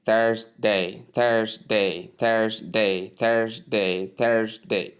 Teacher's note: So the R is not strongly pronounced in many accents.